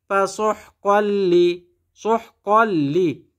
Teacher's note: কফের উপরে তানবিন তানবিনের পরে লাম ইদগামে বেলাগুন্না এজন্য কফ লাম দুই জবর কল লাম জের লি পাস কল্লি